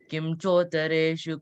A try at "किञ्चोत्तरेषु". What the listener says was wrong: it's Kimmala. It's a N there, not a M, okay? Yeah. Yeah, it's not M grade. Nya mari irukkulla one. But C mari, the opposite C. It's that. So it's Kinchotareshu.